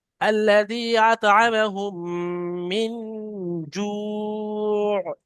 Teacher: এখানে তিন আলিফ পরিমাণ টান দিতে হবে মাদ্দে আরজি ওয়াকফির কারণে